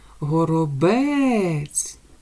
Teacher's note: наголошений у нас третій склад так як ми його вимовили з більшою силою голосу